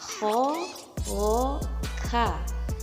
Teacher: Tabaqi, yang mana pangkal lidah menyentuh langit-langit yang lunak